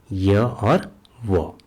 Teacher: इसमें श्वास का अवरोध व्यंजनों की तुलना में कम लगता है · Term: अर्धस्वर